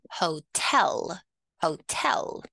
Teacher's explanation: check the pronunciation of the word hotel we put the stress on the second syllable